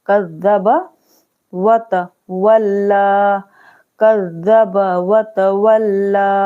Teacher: जाल को ऊपर वाले दांत के पास अपनी जो जबान की नोक है वहां पर रखेंगे तो जाल अदा होते हैं। काफ जाल जबर कज, जाल जबर जा, कज़्ज़ा, बा जबर बा, कज़्ज़ब व तवल्ला, कज़्ज़ब व तवल्ला।